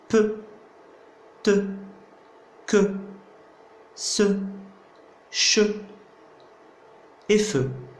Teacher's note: ce sont des consonnes non voisées ou bien sourdes, car il n'y a pas de vibration des cordes vocales